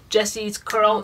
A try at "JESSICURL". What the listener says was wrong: It's not Jessie's Curl. Curl doesn't belong to Jessie. It's JESSICURL.